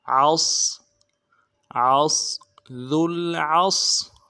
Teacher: عین کو موٹا کریں گے، صاد کے ساتھ ملانا ہے، صاد کی سیٹی موٹی ہوگی.